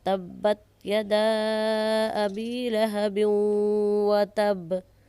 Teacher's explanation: देखें इस आयत में तब्बत यदा अबी लहब व तब पर तब्बत के बा पर क़लक़ला किया जा रहा है। यदा के दाल के आगे अलिफ मद्दा हुरूफ है, इस पर मद की जा रही है। मद कहते हैं खींच कर लंबा करके पढ़ने को। अबी के बा पर अबी के या पर साकिन की अलामत है।